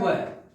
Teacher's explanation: ऊपरी दांत व निचले होठ से केवल एक ही वर्ण होता है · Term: दंतोष्